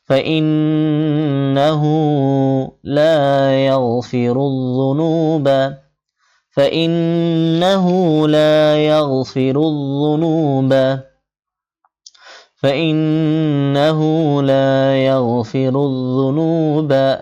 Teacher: নুনে তাসদীদ গুণা করতে হবে আর হা উল্টা পেশ একালিফ টানতে হবে।